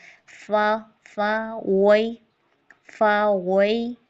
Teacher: اور نیکسٹ فا میں جو ہے نا ہمز کی صفت آتی ہے، اس میں تھوڑا سانس جاری کرتے ہیں، یعنی اوپر کے جو ثنایا علیہ کے دانت ہیں نا وہ نچلے ہونٹ، اوپر کے جو دانت ہیں ہمارے پاس وہ نچلے ہونٹ کے اندر کیا لگتے ہیں، نرمی سے لگتے ہیں تاکہ سانس جاری ہو۔ فا وئی، فا وئی، وئی یہ یالین ہے، اس کو پراپر ادا کریں گے۔